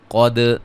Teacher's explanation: قاف کو موٹا، دال پہ قلقلہ